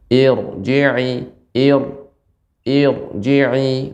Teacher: Namun hamzah wasl yang khusus hamzah wasl. Jadi ro sukun yang sebelumnya hamzah wasl baik kasrah maupun fathah dibaca dengan tebal. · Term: ro tafkhim